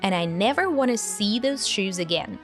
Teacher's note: we drop the D sound from and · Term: connected speech